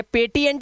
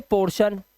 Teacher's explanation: इसी तरह से प्रमोशन, टी के बाद आई ओ आया तो टी के बाद अगर आई ए, आई ओ या फिर आई ई आता है तो टी का जो उच्चारण होगा, इसकी ध्वनि जो होती है वो शा की हो जाती है।